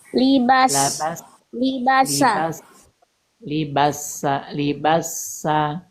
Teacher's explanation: Ada sofir di huruf sin.